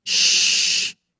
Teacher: Kalau sya, udara yang keluar itu kayak di tengah, di dalam mulut kita Bu. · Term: huruf shin